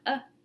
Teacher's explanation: And then the upside down we sound uh as in cut which are all lax vowels and they're all central lax vowels